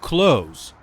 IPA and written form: kloʊz (close)